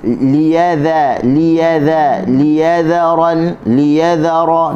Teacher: Dhal hujung lidah di hujung gigi atas. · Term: huruf dhal